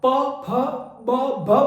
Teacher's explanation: ठीक है, अब यदि आप प फ ब भ बोलेंगे तो जिह्वा होठों पे टच करती है, होठ आपस में मिलते हैं तो उसको ओष्ठ्य कहा जाएगा